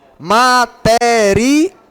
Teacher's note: A sílaba forte é a última, né? Que é o al.